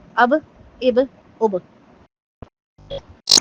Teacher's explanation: تھوڑی سی آواز پہ اس کی ہلانا ہے، جنبش ہوتی ہے آواز میں، یعنی کہ باؤنس بیک ہوتی ہے ساؤنڈ اس کی